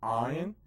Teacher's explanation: And the next one is the ayin, which is kind of pronounced in the back of the throat by Sephardic speakers